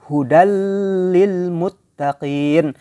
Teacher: Nah lam dan ro ini termasuk idgham bilagunnah ya jadi hudallilmuttaqin bilagunnah tanpa degung jadi tidak terasa dengungnya kan